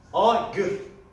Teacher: Kürtçedeki A harfi biraz daha uzun okunur. Yani Türkçedeki A harfinden biraz daha uzun okunur. Kürtçedeki uzun seslerden bir tanesidir A harfi.